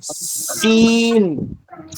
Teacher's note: سین کو بہت باریک سیٹی کے ساتھ نکالتے ہیں